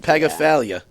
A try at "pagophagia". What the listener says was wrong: There's no L in it though. No. P-H-A-G-I-A.